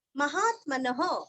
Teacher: विसर्ग का उच्चारण आप ह अथवा हा कोई भी कर सकते हैं।